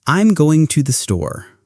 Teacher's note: And for statements, your voice typically falls at the end.